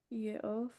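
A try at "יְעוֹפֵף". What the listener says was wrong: Ye'o. Read that last syllable. Fef. Ye'ofef. Ye'ofef. Ye'ofef.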